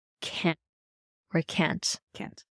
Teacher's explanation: native speakers of English turn the T into the glottal stop